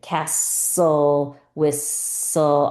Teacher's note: I don't hear that tull at all.